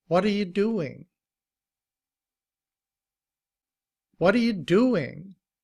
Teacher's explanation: notice that the T is often pronounced like a D also. It's a soft T.